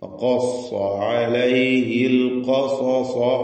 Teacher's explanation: ഖാഫ് 2 സ്വാദുകൾ തഫ്ഖീം ചെയ്യുക, സ്വരഭാരത്തോടെ തടിപ്പിച്ച് ഹെവിയാക്കി പറയാം